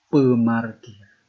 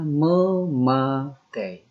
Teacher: Setiap kata yang diawali oleh bunyi P, dia mengalami peluluhan atau dia itu hilang.